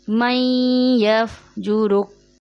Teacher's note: यफ्जुरुक में रॉ के पेश को मजहूल कर दिया जाता है, जैसे यफ्जुरुक रॉ पेश रो कर दिया जाता है, जबकि होता है रॉ पेश रू।